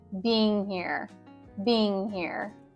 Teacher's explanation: what we want to do is connect the ing sounds to the next word, like with this connected speech.